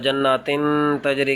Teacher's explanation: جناتن تجری کی تا کے اوپر چونکہ تنوین ہے اس وجہ سے اس پہ غنہ کریں گے